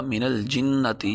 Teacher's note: من الجنت، نون کو لام سے ملائیں گے، وہی بات کہ نون کو اگر لام سے نہ ملائیں تو لام لولا لنگڑا رہے گا، لیکن اس کو اگر لام نون کے ساتھ ملا دیں گے تو اس کو سہارا ملے گا، پڑھا جائے گا من الجنتی۔